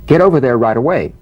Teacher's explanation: the final T, when it's followed by a word beginning with a vowel, again, it becomes, in effect, a medial T. There's a vowel on both sides of it, so it gets softened to a D.